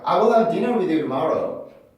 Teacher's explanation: I will have dinner with you tomorrow. 이렇게 to 발음을 to라고 발음하지 않고 아예 플랩을 시켜서 발음하는 경우가 있어요